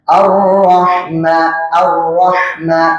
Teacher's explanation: ha sukun itu dia berada di tengah tenggorokan.